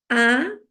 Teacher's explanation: Sin embargo, cuando yo hago la A, ¿qué hago? A, mi lengua baja, ¿verdad? Y tomo una posición central.